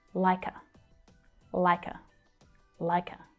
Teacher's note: the k sound from the end of like joins with the vowel schwa